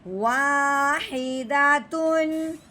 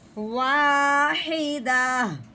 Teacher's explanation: وقف کی صورت میں گول تا میں سے تا کو گرا دیتے ہیں